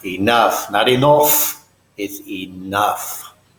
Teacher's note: the vowel sound in enough is that lazy schwa sound again, like when you go, it's enough.